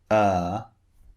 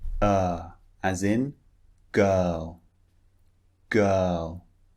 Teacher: now notice the shape of the mouth the first one uh the mouth is quite relaxed it's not far open it's not wide it's not rounded it's relaxed